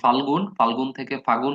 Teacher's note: ল কিন্তু লোপ পাচ্ছে পদের মধ্যে, আর এখানে কিন্তু সম উচ্চারণের দুইটা ব্যঞ্জনধ্বনির একটা লোপ পাচ্ছে, তো দুইটাকে আবার একসাথে গোলায় ফেললেন না। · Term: অন্তর্হতি